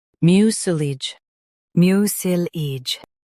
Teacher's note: Mio, sil, ij, mucilage. Stress mio and keep sulage light.